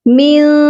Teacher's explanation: اس نون ساکن پر اخفا ہوگا، چھپا ہوا غنہ ہوگا. یہاں پر ہم اپنی آواز کو ناک میں چھپا کر پڑھیں گے